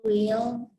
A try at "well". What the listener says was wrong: Bukan will tapi well.